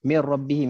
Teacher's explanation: Kemudian kalau ada tanda sabdu, kita tahu ini adalah idgham kamil. Maksudnya kita kena hilangkan terus huruf nun.